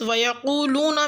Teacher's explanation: آیت نمبر 25 میں لفظ ویقولون میں قاف کو پر یعنی کہ موٹا ادا کریں